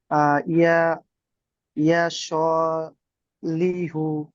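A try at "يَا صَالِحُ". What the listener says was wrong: ইয়া স, ইয়াই টান হবে, সয় টান হবে। ইয়া সলিহু।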